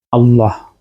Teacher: আমরা লামটা পুর করি আল্লাহ কারণ এখানে আগের হরফে জবর থাকে